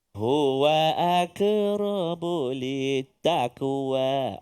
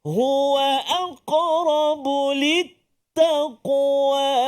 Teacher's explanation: apabila bertemu dengan huruf qaf, jangan baca dengan tipis lah